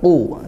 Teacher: qofnya tetap tebalkan dengan harakat dhammah